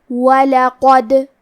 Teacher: کلمت وَلَقَدْ میں حرف القاف کو موٹی آواز میں پڑھیں گے، آخری میں کیونکہ دال پہ جزم ہے اور حرف الدال حروف القلقلہ میں سے ہے تو ہم یہ حرف کو ہلاتے ہوئے یہ کلمہ کو پڑھیں گے